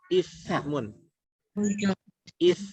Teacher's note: Ujung lidah ketemu dengan gigi seri atas.